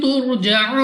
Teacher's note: را ساکن سے پہلے پیش، را کو موٹا یعنی پر پڑھنا ہے۔ واو ساکن سے پہلے پیش واو مدہ، مگر وقف میں را کو کر دیں گے ساکن، اور اس واو مدہ کو مد عارض کے ساتھ بدل کر 3، 4 یا 5 سیکنڈ تک کھینچ کر پڑھنا ہوگا۔